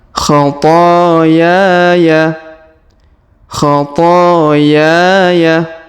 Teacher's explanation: Huruf to kita panjangkan 2 harokat karena terdapat alif di depannya. Huruf ya kita panjangkan 2 harokat karena terdapat alif di depannya. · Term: dua harakat